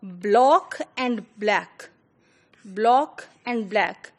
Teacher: A quick example is of, the Jamaican Creole, in which, both, block and black, they are pronounced as black